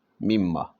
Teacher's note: نون یہاں پر ختم ہو چکا ہے، مما۔ نون اور میم چونکہ قریب المخرج ہیں تو نون کو میم کیا، میم کو میم میں ادغام کر دیا